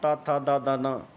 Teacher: ता वर्ग जो होता है वो आपका दंत स्वर होता है, दंत व्यंजन होते हैं